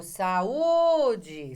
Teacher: Você viu que a sílaba tônica é o U sozinho.